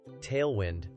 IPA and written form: ˈteɪlwɪnd (Tailwind)